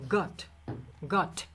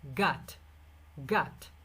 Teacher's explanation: যেখানে যেই সাউন্ডটা ব্রিটিশরা যেটাকে অ বলে, আমেরিকানরা ওটাকে আ বলে।